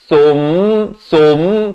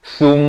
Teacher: Sa bari dhammah bunyi su, bukan bunyi so.